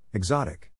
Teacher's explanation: in this case the accent is in the second syllable